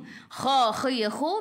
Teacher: biar ada angin biar menggelegak